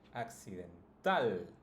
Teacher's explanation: all you have to do is put the stress on the last syllable